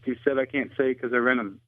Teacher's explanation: One example is the dropped H in the pronouns his, him, and he.